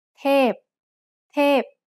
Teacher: tape is a falling tone